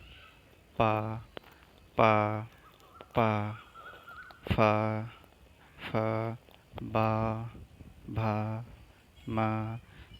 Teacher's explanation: तो वायु हमारे ओठों को स्पर्श करके ही निकल रही है। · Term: ओष्ठ